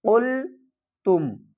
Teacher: قاف کو پر پڑھیں گے اور لام کے ساتھ ملا کر پڑھیں گے